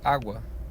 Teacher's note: água, onde o U é a semivogal e o A é a vogal